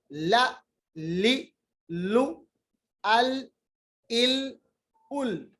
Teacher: लाम पढ़ते वक्त दोनों साइड से जो हमारी जो जबान की करवट है ना, वो ऊपर की तरफ मिल जाती है दांतों के साथ, जवाहिक तक